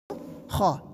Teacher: بس یوں سمجھیے کہ اس میں ہوا کو تیز آواز کر کے نکالنا ہے، جیسے ہا، ہا نہیں ہا، خا۔ تو خا جو ہے ہمیشہ موٹا پڑھتے ہیں، اس لیے کہ حروف مستعلیہ ہے